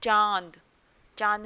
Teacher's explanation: चांद में आपने सुना होगा आ के साथ-साथ एक और ध्वनि आ रही है। जो किसकी ध्वनि है? अनुनासिक की ध्वनि है।